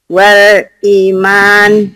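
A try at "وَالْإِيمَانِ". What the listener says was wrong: I-nya mad tabi'i dulu tuh Bu. Nih yang tadi saya jelaskan. Kasro dengan ya mati, patah dengan alif. Ini mad tabi'i bacaan panjang.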